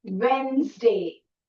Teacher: Now see, note the dropped syllable. The whole syllable has been dropped, N-E-S. Okay, so we say Wednesday.